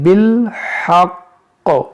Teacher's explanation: مشدد حرف پر ٹھہریں گے تو اس زیر کو ساکن کر دیں گے، اس تشدید کو ہم باقی رکھیں گے